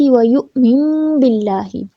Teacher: نون کی آواز کو میم میں بدلتے ہوئے ہم ساتھ میں گنہ کریں گے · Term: اقلاب